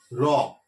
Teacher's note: জিভটা কোথাও স্পর্শ করছে না, জাস্ট তালুর কাছে গিয়ে উল্টে গিয়ে ওই হালকা একটু স্পর্শ করছে বা করছে না